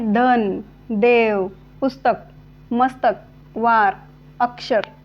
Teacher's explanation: संस्कृतच्या शब्दाच्या अंत्य अ शेवटचा अ हा अपूर्ण उच्चारल्या जातोय ओके पटकन उच्चारल्या जातोय ओके मग हे असे संस्कृत मधील काही